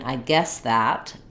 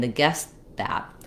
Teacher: my S sound can continue for a fairly long time and I go right to the T I guess that guess